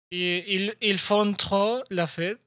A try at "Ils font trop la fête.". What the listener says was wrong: C'est ça. Perfecto.